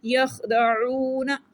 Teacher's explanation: عین کو گلے کے درمیان والے حصے سے پڑھیں گے